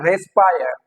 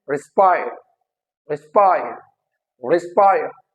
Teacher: It is not रेस्पायर, it is रिस्पायर, रिस्पायर, रिस्पायर. री is not जो है stressed, स्पायर is stressed